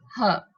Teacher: when we're producing h, so it's like air is obstructed at the beginning of the glottis. मतलब glottis से ही हवा को रुकावट आ रही है. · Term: h sound